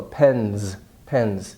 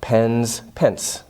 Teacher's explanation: The n, voiced, n, so the S becomes voiced.